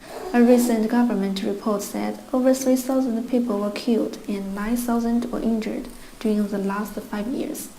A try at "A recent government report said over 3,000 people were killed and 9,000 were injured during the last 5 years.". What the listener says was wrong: Notice how flat her voice is. There's no stress, there's no intonation, there's no pausing. She doesn't pause between anything.